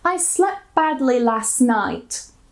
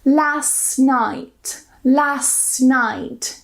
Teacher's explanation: I completely removed the T in both of these cases.